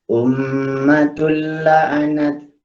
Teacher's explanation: Maksudnya itu kita masukkan bunyi tanwin kepada lam. Jadi bunyinya tul. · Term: idgham bila gunnah